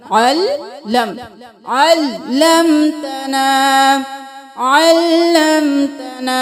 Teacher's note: عین کو گلے کے درمیان سے نکالیں گے